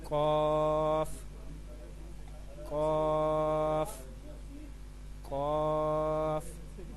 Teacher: قاف زبان کی جڑ اور تالو کے نرم حصے سے ادا ہوتا ہے. آپ اپنی زبان کی جڑ اس کو اپنے تالو کے نرم حصے کے ساتھ ملانا ہے اور وہاں سے ادا کرنا ہے.